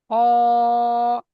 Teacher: এটা গলার শেষ ভাগ থেকে।